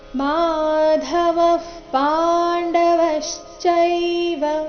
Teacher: ಮಾಧವ ನಂತರ ಇರೋ ವಿಸರ್ಗದ ಉಚ್ಚಾರಣೆ ಅರ್ಧ ಫರ ಬರಬೇಕು ಯಾಕಂದ್ರೆ ಮುಂದಿನ ಶಬ್ದ ಪಾಂಡವಶ್ಚೈವ ಪ ದಿಂದ ಶುರುವಾಗ್ತಾ ಇದೆ ಮಾಧವ ಪಾಂಡವಶ್ಚೈವ ದಿವ್ಯೌ